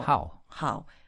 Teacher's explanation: It's how, fourth tone, falling one.